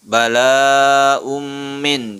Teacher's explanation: Di sini ada tanwin bertemu dengan huruf mim, jadi dibaca idgham bi gunnah. Mim termasuk huruf yanmu dan itu adalah idgham bi gunnah.